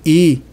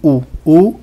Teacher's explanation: e o céu da boca então quando eu digo i a abertura que há na boca é pequena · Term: fechadas